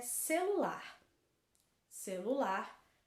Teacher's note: Celular, a última sílaba é a mais forte, então ela é uma palavra oxítona. A última sílaba é mais forte, então palavra oxítona